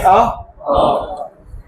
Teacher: अ बोलते समय आप देखेंगे जीभ का बिचला वाला हिस्सा सक्रिय रहता है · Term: केंद्रीय स्वर